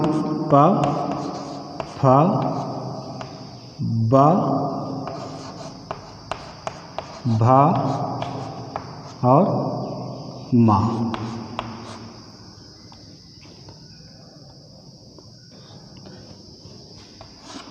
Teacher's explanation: ये हमारे ओष्ठ से उच्चारित होते हैं, इसलिए इनका नाम ओष्ठ वर्ण पड़ा